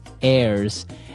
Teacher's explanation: Now, if you notice, the H is silent there.